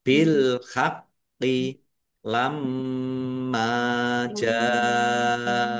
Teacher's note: Mim tasdid bacaan ghunah dibaca mendengung ditahan biar tampak mendengungnya. · qof-nya dibaca dobel, ada tasdidnya ditekan dan ditahan biar tampak dobelnya · Dibaca panjang harus lima harakat. Humnya dibaca wakaf dan pendek karena tidak ada tanda panjangnya. Qof lam tanda wakaf boleh terus tetapi berhenti lebih baik.